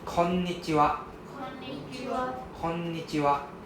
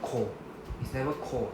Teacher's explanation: The first N go with the first part. The second N go with the second part. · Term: double N sound